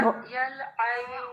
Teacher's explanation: را کو ہیوی رکھنا ہے آپ نے، اور حمزہ ساکین ہے، اس کو آپ نے سختی سے پڑھنا ہے